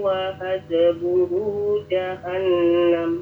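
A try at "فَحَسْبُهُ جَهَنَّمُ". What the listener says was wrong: Itu fa ya, bukan wa. Fahasbuhu jahannam.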